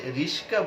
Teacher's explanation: রিক্সা শব্দটিকে যেখানে রিস্কা বলছে, তাহলে ক এর জায়গায় স চলে গেল আর স এর জায়গায় ক চলে আসলো